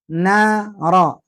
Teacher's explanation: ujung lidah nempel ke ujung langit-langit